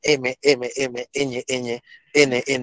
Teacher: O cuando digo por el modo, por ejemplo, la N, N, N, entonces un poquito de aire sale por la nariz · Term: nasal